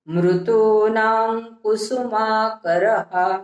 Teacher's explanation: मृतूनाच्या नावर अनुस्वार पुढे आलेल्या क मुळे त्याचा उच्चार ङ सारखा, कारण क हे क वर्गातला आहे आणि क वर्गातला अनुनासिक ङ आहे, म्हणून मृतूनां कुसुमाकरः।